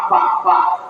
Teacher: Di antara bibir bawah bagian dalam gigi seri atas · Sekali lagi untuk Fa, gigi seri atas dengan bibir bawah. Fa ini ya, gigi seri atas dengan bawah. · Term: huruf pa